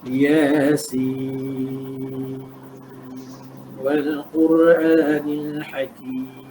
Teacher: Iaitu Yasin tu, sin dia 2 harakat, sin 6 harakat, hujung ada huruf nun, kita matikan dan sambung terus dengan wal Quran dengan izhar